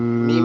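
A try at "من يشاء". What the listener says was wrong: হবে না, মাই, মাই হবে, মিম হবে না, মাই হবে।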